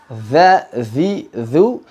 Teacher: lidah keluar sedikit begini posisinya keluar sedikit digesek Za Zhi Zhu hati-hati udaranya tidak berhembus deras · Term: Zal